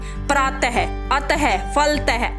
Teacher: इस अयोगवाह ध्वनि का उच्चारण करते समय मुख से ह की ध्वनि निकलती है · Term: विसर्ग